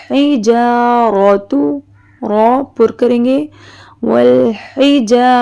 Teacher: حا حلق سے نکالیں گے